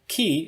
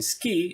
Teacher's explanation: The K in ki is aspirated, but the K in ski is unaspirated.